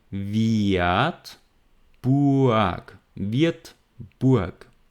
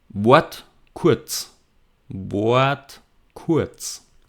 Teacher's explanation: Wird, Burg. So you hear that the R is not pronounced, but it's very strongly vocalized to an A sound. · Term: R is vocalized